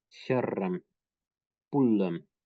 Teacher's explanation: Kere is a ring, pule is a fish, and again, gemination of the last consonant is present